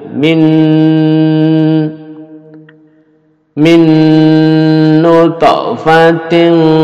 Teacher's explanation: nun dilebur jadi satu dengung dipanjangkan dengungnya